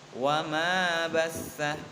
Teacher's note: Ini adalah bacaan mad tabi'i karena mim yang mempunyai tambahan alif dan panjang bacaannya 2 ketuk.